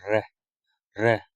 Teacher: र को बोलते समय हमारे जीवा में क्या होता है? कंपन होता है, इसलिए हम इसको प्रकंपित या लुंठित व्यंजन भी बोलते हैं।